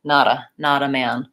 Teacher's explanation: And the T becomes more of a flap T